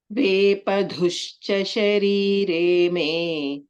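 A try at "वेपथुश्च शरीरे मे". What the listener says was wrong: ధు కాదు తు సెకండ్ థ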